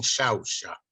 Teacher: Esta she, la fricativa sorda, también se da por Puerto Rico, pero también en las Islas Canarias.